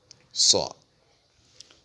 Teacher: Elle s'écrit de part et d'autre de la ligne, et la partie supérieure étant arrondie, la partie inférieure étant la queue qu'elle perd lors de la liaison. Elle se prononce lorsque les bords de la langue s'appuient contre la racine des prémolaires et la position des lèvres à la fin est verticale, telle lors d'un sifflotement. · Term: lettre emphatique